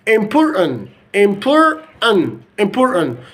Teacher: So we have deleted the two T's, the two T sounds in this word.